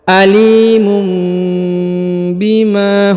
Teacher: huruf ma dipanjangkan 2 harokat karena ada alif di depannya